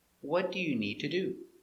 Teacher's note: important words are stressed what need the verb